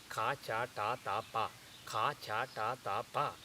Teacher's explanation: that position is moving from the back of the mouth for ka to the lips for pa. So for ka it is at the back of the mouth.